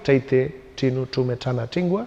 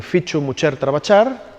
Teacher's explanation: Uno sería la famosa chevaqueira, la de cheite, chinu, chume, chana, un sonido un poco particular, una especie de che pronunciada con la punta de la chingua